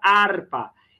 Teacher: Harpa, a mais forte é o ar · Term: sílaba mais forte